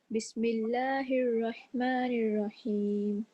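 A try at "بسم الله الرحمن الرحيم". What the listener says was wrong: اس سین پہ تھوڑا ٹائم دیجیے. بسم اللہ الرحمن الرحیم.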